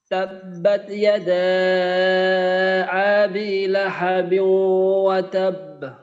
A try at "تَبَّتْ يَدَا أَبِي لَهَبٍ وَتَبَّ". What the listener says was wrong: আচ্ছা, এখানে একটু লম্বা হয়ে গেছে, তো এটা যেন লম্বা না হয়। তাব্বাত ইয়াদা আবি লাহাবিউ, আবি, এখানে যেন আবি এভাবে লম্বা না হয়।